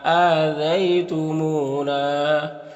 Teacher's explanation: یہاں پر واو ساکن سے پہلے میم کے اوپر پیش ہے تو واو مدہ ہوگا، واو مدہ کو ایک الف کے برابر کھینچ کر پڑھتے ہیں۔ یہاں پر الف سے پہلے نون کے اوپر زبر ہے تو الف مدہ ہوگا، الف مدہ کو بھی ایک الف کے برابر کھینچ کر پڑھتے ہیں، تو اس طرح سے پڑھیں گے۔